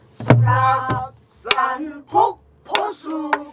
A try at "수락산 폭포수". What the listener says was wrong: 수락하고 끊어서 한 박을 쉬는 게 낫지 수락산 해버리면은 막상이 깨져요 수락사르폭포수 해야지 시작